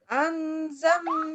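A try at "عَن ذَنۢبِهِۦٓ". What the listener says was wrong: Pakai ain. Pakai ain. Ya, haknya masih kurang panjang itu sebetulnya.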